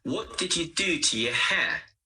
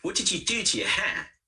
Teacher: Here, what, do, and hair are stressed. You, to, and your are weak. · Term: stress and weak forms, weak forms